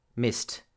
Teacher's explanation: S in missed is unvoiced. So the t will also be pronounced missed. Then you have the shh in wished, the in hoped, the c in kicked, and the in coughed. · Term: t sound